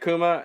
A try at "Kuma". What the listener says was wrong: No, you said Akuma. I'm like, just Kuma. Just Kuma. It's